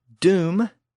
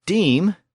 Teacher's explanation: Well, from doom to deem, we can hear that sound shift from the back vowel, oo, to the front vowel, e.